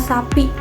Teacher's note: Dalam kata sapi adalah geseran tak bersuara atau keras